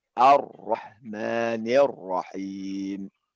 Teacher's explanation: ada penekanan ya pada huruf yang ro yang menjadi tebal ya. Dia dibulatkan Ar-Rahman, bukan Ar-Rahman ya.